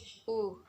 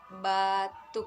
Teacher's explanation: agak tinggi belakang bulat